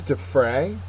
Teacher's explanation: Defray is a verb. The second syllable is accented.